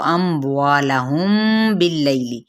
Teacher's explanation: میم ساکن کے بعد با آ رہا ہے تو یہ کیا ہو گیا یہاں پہ اخفاء شفوی